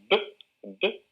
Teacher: Pero si pronunciamos un sonido sonoro, como es B, B, vamos a notar que las cuerdas vocales empiezan a vibrar antes de pronunciar el sonido. La vibración ocurre antes, el sonido ocurre antes de pronunciar B, B, ¿no?